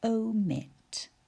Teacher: 2 syllables. In the first syllable, we have O, a long vowel sound, all on its own in this syllable. Mit. I, a short vowel sound.